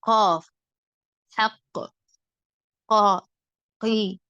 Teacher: நாவின் கடைசி பகுதி மேல் முரசில் தொட்டு விலகும் போது உண்டாகும் குரல் வாய் நிரம்ப ஒலிக்க வேண்டும்